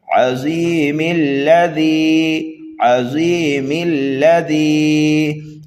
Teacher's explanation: اگر ملا کر کے پڑھنا چاہتے ہیں تو میم کو ہم ڈائریکٹ لام مشدد میں ملا دیں گے · حمزہ وصلی اس کو کہتے ہیں کہ یہ ملانے کی صورت میں گر جاتا ہے